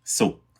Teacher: So it's a unreleased velar stop.